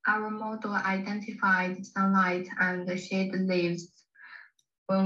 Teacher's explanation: see if you can hear where she leaves out the past tense like shaded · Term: past tense marker